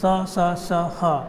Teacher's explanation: जो हवा है वो आपके मुख से रगड़ हुए बाहर की ओर निकलती है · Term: संघर्षी व्यंजन